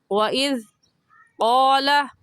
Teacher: زبان کی نوک دونوں دانتوں کے درمیان میں لانے سے زال نکلتا ہے، تو نرمی سے پڑھیں گے۔